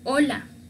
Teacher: Pero en un compuesto, en una palabra, esta letra en el alfabeto no se lee. Se dice que es una H muda, no tiene sonido.